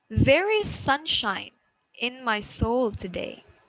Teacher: we have sunshine and soul as stressed words